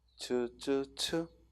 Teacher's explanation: 즈, 쯔, 츠 하고 이는 터뜨렸다 스쳐내보내는 소리야. 역시 삼중체계로 되어 있고 마찰음은 스쳐내보내는 소리. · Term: 파찰음